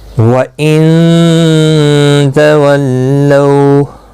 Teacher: نون ساکن کے بعد حروف اخفا کا تا اخفا حقیقی ہوگا ، لو اولین ہے، تھوڑا نرمی کے ساتھ کھینچ کر ادا